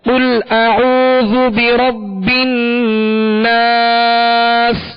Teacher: آخر میں سین کی آواز کو واضح کرنا ہے، اور اس کی آواز سیٹی کی آواز مزید زیادہ تکلف میں بھی نہ ہو، جیسے ناس اس طرح بھی نہیں پڑھنا، بلکہ سین کی جو سختی ہے، جو سیٹی کی آواز ہے، وہ واضح محسوس ہو اور ساکن کر دینا ہے سین کو